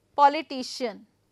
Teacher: I am going to put up the stress on penultimate. Penultimate, that the second to last.